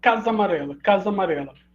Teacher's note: duas vogais iguais crase faço uma vogal só